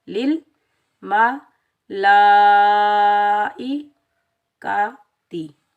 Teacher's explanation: مد متصل واجب کو 5 الف کی مقدار کھینچ کر ادا کریں گے